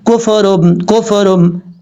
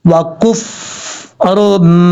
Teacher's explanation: فا کے اوپر جب فا کو ادا کریں تو آواز جم جائے، کیونکہ فا ساکن ہے